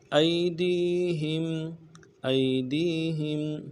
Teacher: ہا کو میم ساکن کے ساتھ ملانا ہے، غنہ کریں گے